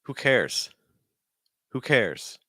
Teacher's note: So you want to stress cares. See how weak who is?